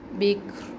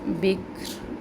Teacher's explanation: کاف میں ہمس کی کیفیت بھی ہو، سختی نہ ہو، کلکلہ بھی نہ ہو، اور را کو بھی ہم ساکن کریں گے، بکر۔